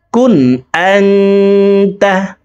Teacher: পরে ইকফার 15টি হরফের ভিতরে একটি হরফ তা আসছে এই কারণে এই নুন সাকিনকে নাকের ভিতরে লুকাইয়া গুন্নার সহিত পড়ব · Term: ইকফা গুন্না